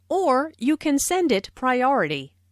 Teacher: notice the stress on or which emphasizes that there is another possibility